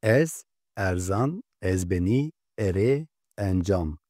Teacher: E harfi de tıpkı A harfi gibi iki farklı telaffuza sahiptir. Birinci telaffuz Türkçe E sesine benzer açık E harfidir.